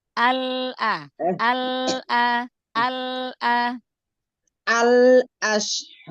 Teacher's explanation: Tahan lagi lam sukunnya biar nggak ale.